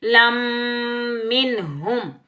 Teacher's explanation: میم مشدد پر ادغام مال غنہ ہوگا، نون ساکن اور میم ساکن کا اظہار ہوگا۔